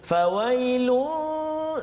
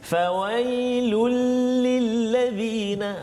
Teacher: Jadi kena jelaskan bunyi tanwin itu masuk dalam lam. Jadi seolah-olah macam hilang satu baris, seolah-olah lah contoh. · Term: idgham bila gunnah